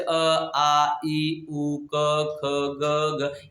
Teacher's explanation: निर्नासिक मतलब पूरी की पूरी आवाज मुख से निकले, नाक से नहीं।